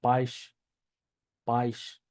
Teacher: al final de palabra, se pronuncia ish, ¿sí? Por ejemplo, tener la palabra paish, paish, ¿sí?